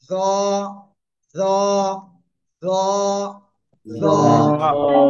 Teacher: জিব্বার আগা উপরে 2 দাঁতের আগে লাগান, লাগিয়ে মোটা আওয়াজে উচ্চারণ করতে হবে।